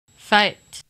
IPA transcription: faɪ̯t